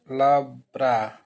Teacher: बीच वाले व्यंजन में अ का उच्चारण नहीं होता है